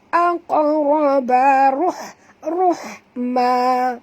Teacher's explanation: Tengok ini ha pedas, dia berbeza dengan ha simpul. Jadi bunyi dia jelas ringan.